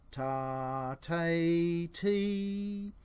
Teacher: the point of your tongue where it touches the roof of your mouth is slightly further forward as you go through those three syllables